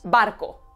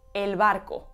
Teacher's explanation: cambie dependiendo de dónde se encuentra en la cadena hablada como cuando pronunciamos la B de barco si está a principio de discurso como oclusiva bilabial o cuando pronunciamos esa misma B como aproximante cuando está en medio del discurso